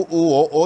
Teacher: நாவின் பின்பகுதி உயர்ந்தும் இதழ்கள் குவிந்தும் உள்ள நிலை என்று சொல்லுவார்கள்